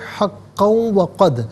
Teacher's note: 2 زبر کی تنوین جو قاف کے اوپر ہے اسے واو کے ساتھ ملا کر وہ کی آواز کو غنّے کے ساتھ ادا کریں گے